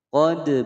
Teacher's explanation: Qad bayyana al-ayati liqaumin yuqinun. Qad ada dal berharokat sukun dipantulkan. Hukum bacaan qalqalah sughra.